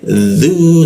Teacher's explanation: dzu itu ujung lidah digigit dia